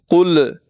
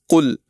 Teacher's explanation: یاد رکھیں لام حروف قلقلہ میں سے نہیں ہے، اس لیے قل پڑھتے وقت لام پر آواز کو بس روک دینا ہے، اس میں جھٹکا نہیں دینا، زور لگا کر نہیں پڑھنا